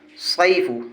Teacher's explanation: یائلین کو نرم آواز کے ساتھ جلدی پڑھیں گے۔